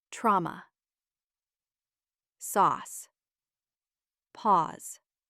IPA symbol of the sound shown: ɔː